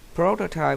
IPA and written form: ˈprəʊtətaɪp (prototype)